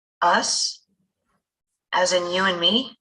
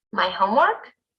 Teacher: To check that we heard correctly, we can repeat some of the person's words with rising intonation.